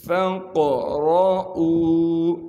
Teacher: علیم ان لن تحصوہ فتاب علیکم فاقرؤوا، فا کو قاف ساکن سے ملانا ہے، قاف پر قلقلہ کیا جائے گا کیونکہ قاف حروف قلقلہ میں سے ہے اور قاف کو موٹا کر کے پڑھیں گے